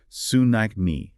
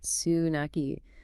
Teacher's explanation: In Japanese, it's pronounced with a subtle T at the beginning, but in English, we usually drop it and say tsunami.